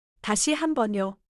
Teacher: The final 요 should be gentle. Not too high, not too flat.